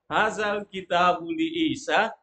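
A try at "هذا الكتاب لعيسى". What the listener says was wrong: Coba intonasinya kok kayak nanya. Anggap aja itu li Isa titik. Hazal kitabu li Isa. Selesai. Jadi nggak kelihatan panjang dia. Begitu. Jadi intonasi bikin orang paham.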